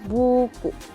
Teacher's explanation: vokal U tinggi atas belakang